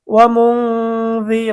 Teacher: নুন সাকিনের পরে যাল ইকফার হরফ গুন্না সহ স্পষ্ট পড়তে হবে।